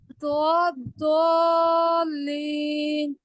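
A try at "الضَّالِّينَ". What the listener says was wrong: इसको कितने count stretch करेंगे? तो 6 काउंट्स करिए। आपने 6 काउंट नहीं किया। और इसका तरीका क्या है कि आप अपनी फिंगर्स को खोलेंगे, 6 फिंगर्स को। ठीक है, तो फिर उतने टाइम स्ट्रेच करना है।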